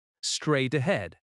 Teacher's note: The stress falls on straight and head.